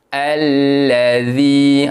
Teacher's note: zal baris bawah bertemu dengan huruf ya. Perlu dibaca dengan bacaan panjang dua harakat mad asli dekat situ